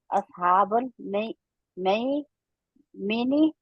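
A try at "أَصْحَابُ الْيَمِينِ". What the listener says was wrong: गौर से देखे मई में नहीं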